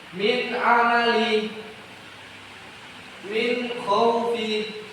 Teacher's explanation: suara nun atau tanwin dibaca jelas, tidak ada dengung sama sekali. Bacaan keluar terang dari mulut. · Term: idhar